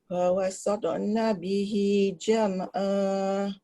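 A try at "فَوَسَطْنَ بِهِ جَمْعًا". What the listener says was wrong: Dia lantunan dia relax je. Fawasatna bihi. Dia ada ruang khas untuk qalqalah ni.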